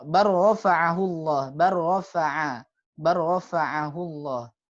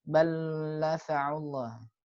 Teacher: antara lam dengan ro itu perbedaannya hanya di sifat takrirnya saja, sehingga jangan sampai hilang takrirnya ya. Kalau takrirnya hilang nanti seolah-olah dia jadi lam saja.